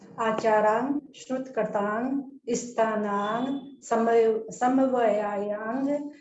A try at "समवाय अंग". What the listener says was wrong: ये समवाय शब्द है, समवाय, और उसको अलग अलग करके बोल सकते हैं। समवाय अंग, इकट्ठा नहीं बोला जा रहा है ना।